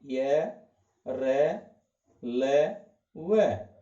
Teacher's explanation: ये का उच्चारण स्थान तालु, रे का मुर्दा, ल का दंत, व का ओष्ठ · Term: अंतस्थ व्यंजन